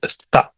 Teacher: سا کو دو دانتوں کے بیچ میں لا کر اس کا مخرج ادا کرنا پڑتا ہے، سا، لیکن اردو میں سا کو سا کہتے ہیں، تو اسی لیے اوثان کو اوسان کہتے ہیں۔